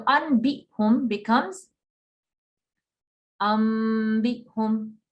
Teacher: when nun sakin or tanween is followed by a ba, it is exchanged for an M sound. There is a light ghunna. So anbihum becomes bihum. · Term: iqlab